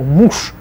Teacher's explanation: Же at the end becomes sh